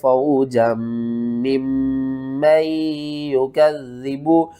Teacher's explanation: हमने जीम को मीम के साथ सख्ती के साथ मिलाना है, फिर इस मीम को इस मीम के साथ मिलाना है, इस मीम को 2 बार पढ़ेंगे, इस मीम को 2 बार पढ़ेंगे और इस मीम को या के साथ नहीं मिलाना, इस मीम को नून और या दोनों के साथ मिलाकर पढ़ना है।